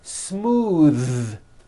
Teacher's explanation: Believe it or not, the TH sound in smooth is voiced.